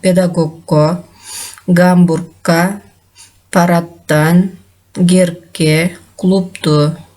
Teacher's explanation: буларга уланган мүчөнүн башкы үнсүсү каткалаңдашып айтылат, бирок жазууда жумшак үнсүс боюнча сакталып калат.